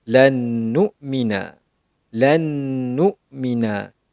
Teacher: Nun sakinah bertemu dengan huruf nun, maka akan menjadi hukum idgham ma'al ghunnah, manakala cara bacaan sama sahaja itu dengan D, menunjukkan perlu dengung.